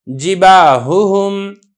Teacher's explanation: اب ہا اور ہا دونوں حرف ہیں، دونوں ضعیف ہیں، تو آپ نے ان کو بڑی احتیاط سے ادا کرنا ہے